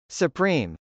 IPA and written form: səprˈim (supreme)